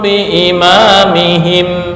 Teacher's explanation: ketika membaca tanwin bertemu itu adalah iqlab ya Ada rongga antara dua bibir